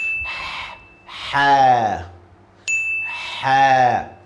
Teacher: this letter is coming from your throat, middle of your throat.